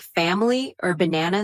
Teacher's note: something like family or banana sounds more natural because of the schwa